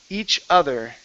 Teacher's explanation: instead of older oh this is an ah sound